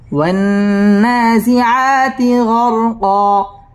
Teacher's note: ওয়ান্না ওয়াজিব গুন্না, গুন্নাহ করে পড়তে হবে।